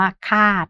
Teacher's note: ส่วนอักษรต่ำคำตายเสียงยาวก็ได้แก่คำว่าคาดนะคะซึ่งเป็นเสียงโทนะคะ